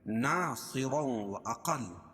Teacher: صاد کو موٹا پڑھیں گے کیونکہ حروف مستعلیہ میں سے ہے۔ اور 2 زبر کی تنوین کے بعد ادغام مع الغنہ کے 4 حرفوں میں سے واو آ جائے گی۔